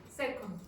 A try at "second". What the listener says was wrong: Again, do you hear the consonant? I don't hear the consonant.